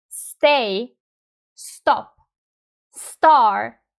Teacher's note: when you have t coming out after s, it's not aspirated in English. For example, when you say stop in these words like stay, stop, star, the t sound is very very close to the finish the sound.